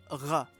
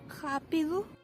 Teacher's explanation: In Portuguese, R represents a voiced uvular fricative sound, r, if it starts a word or is doubled. Otherwise, it's pronounced as an alveolar tap, r.